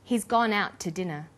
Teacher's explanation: The to is unstressed. When we link out, which is stressed, and to, which is unstressed, the final t sound in out is held slightly longer.